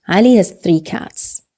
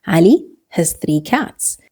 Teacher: The word has is reduced to his.